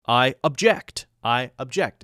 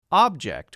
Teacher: the verb form because it's used as a verb putting the stress in the second syllable